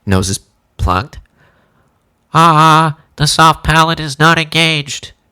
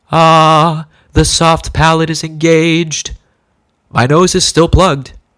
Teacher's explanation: you'll hear the difference between the soft palate being relaxed and raised